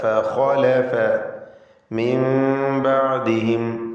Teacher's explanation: നൂനിനെ മീമാക്കി മാറ്റണം, മണിച്ചുകൊണ്ട് ഉച്ചരിക്കുക. ഇഖ്ലാബ് എന്ന് പറയുമ്പോൾ മീമിൻ്റെ ഹുക്മ് കൊടുക്കുക, അതിന് മീമിൻ്റെ നിയമം അനുസരിച്ച് മണിക്കുക.